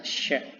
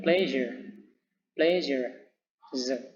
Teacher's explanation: the blade of the tongue touch behind the alveolar ridge. Jadi bagian bilah lidah ini bagian ya, bagian bilah lidah itu menyentuh belakang daripada bridge. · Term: post alveolars